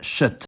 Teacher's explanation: In native Swedish words, before any front vowel, K is pronounced [ɕ]